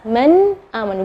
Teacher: nun sukun ketemu dengan Hamzah maka bacanya nunnya Yang jelas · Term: izhar